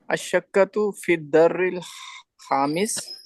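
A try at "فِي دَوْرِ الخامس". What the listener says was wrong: दर्री नहीं है ये।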